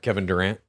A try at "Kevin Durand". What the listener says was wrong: No, not Kevin Durant. Kevin Durand. You're saying it with a T. I'm saying it with a D.